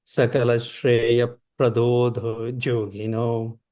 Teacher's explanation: because a visarga is followed by a pa, it creates like the up noise.